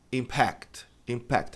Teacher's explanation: A tônica tá na última sílaba